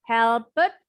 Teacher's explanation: Bunyi ed-nya seperti T sebenarnya.